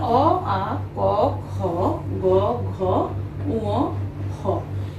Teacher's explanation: এই বর্ণগুলোর উচ্চারণ স্থান হচ্ছে কণ্ঠ বা জিহ্বামূল। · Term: জিহ্বামূলীয় বর্ণ